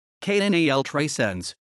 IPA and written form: kəˈnal ˌtɾɛˈsens (Canal 300)